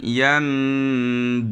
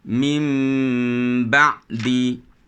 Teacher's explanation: menukarkan bunyi nun mati kepada bunyi mim yang ringan serta dengung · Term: iqlab